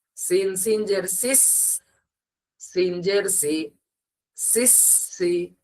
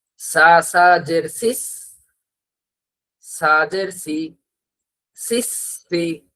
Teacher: এই সিটির না যে আওয়াজটা, এটা সিনের মধ্যে হবে, এটা কিন্তু সায়ের মধ্যে হবে না। কারো যদি সা এর উচ্চারণ করার সময় এই এরকম এই সিটি না আওয়াজ আসে, কারো মুখ থেকে যদি আওয়াজটা হয়, বুঝবেন যে আপনার সা এর উচ্চারণ পারফেক্ট হচ্ছে না। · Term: সিটির না আওয়াজ